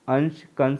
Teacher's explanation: अनुस्वार के उच्चारण में वायु नाक से निकलती है, जबकि अनुनासिका के उच्चारण के समय वायु नाक और मुंह दोनों से निकलती है।